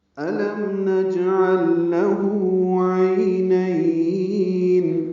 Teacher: نجعل جیم ساکن پہ قلقلہ ہے، عین وسط حرکت سے ادا ہوگا. · لام ساکن ہے اور اس کے بعد لام آنے کی وجہ سے دونوں لاموں کا ادغام ہوا ہے. یہ ادغام مثلین ہے، یعنی ایک جیسے حروف آنے کی وجہ سے ادغام کیا گیا ہے، ملا دی گئی.